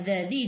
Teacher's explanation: Hujung lidah keluar pada gigi depan